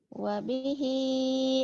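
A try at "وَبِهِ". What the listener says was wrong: Wabihi gitu. Bukan wabihi. Kalau wabihi ada tasdid. Datar doang. Wabihi. Tekan di ujungnya kan mah. Wabihi.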